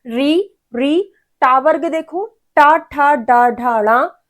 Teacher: हमारा टंग ट्विस्ट होके पैलेट को टच करता है। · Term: मूर्धा